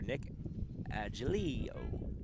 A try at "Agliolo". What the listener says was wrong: You say his name differently every time you say it. Agliolo? Agliolo? There's no N, so you've been saying Angelio, but there's like 7 letters in the name. You're pronouncing 3.